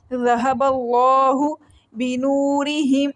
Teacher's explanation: واو مدہ ہے، 1 سیکنڈ کے لیے لمبا کر کے پڑھیں گے